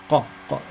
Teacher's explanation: So when you say aq, you must feel that the back of the tongue touches the fleshy part of the roof of the mouth. · Qaf comes from the soft palate